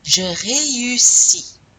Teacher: You have to pronounce the E and the U separately. E-U.